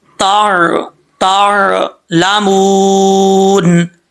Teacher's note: यहां पर वव साकिन से पहले पेश तो व मद्दा पढ़ा जाता है इसको एक अलिफ की मकद लंबा करेंगे